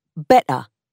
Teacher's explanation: The t in the middle and at the end of words disappears, so the word better becomes better, and the word what becomes what.